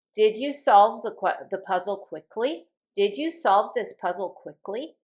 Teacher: You can just see that it starts with a verb and the voice goes up.